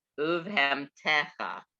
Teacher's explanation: Remember, we talked about the metek. The emphasis is on the next to the last syllable.